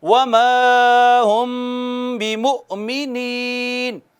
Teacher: مؤمنین میں حمزہ پہ جھٹکا دیا